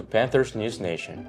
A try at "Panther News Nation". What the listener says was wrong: It is Panther. It's Panther News Nation, not Panthers.